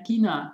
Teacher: And then kina is unaspirated.